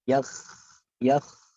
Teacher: Jadi kha-nya itu tetap bergetar. Yakh. Jadi jangan yakhsha, itu terhenti dia.